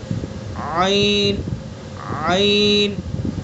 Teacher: عین کا مخرج وسط حلق یعنی حلق کا درمیانی حصہ ادا کیجئے. عین عین رب العالمین رب العالمین.